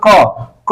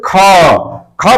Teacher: क आप जब उच्चारण करेंगे तो आपका प्राणवायु कम खर्च होगा, अल्प खर्च होगा, तो इसीलिए वो अल्प प्राण है। इसी तरह से जैसे ख बोलेंगे तो ख में प्राणवायु जो है अधिक होगा, तो इसीलिए जो है यहाँ पर इसको महाप्राण कहा जाता है।